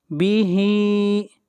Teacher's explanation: ہا کو کھینچ کر پڑھیں گے ایک الف کے برابر